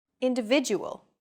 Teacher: The stressed syllable vi in individual is deemed more important, so it's pronounced longer than all other syllables.